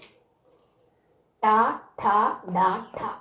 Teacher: ശിരസിൻ്റെ സഹായത്തോടുകൂടി മൂർധാവിൻ്റെ സഹായത്തോടുകൂടി ഉച്ചരിക്കുന്ന വർണ്ണങ്ങൾ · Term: ടവർഗങ്ങൾ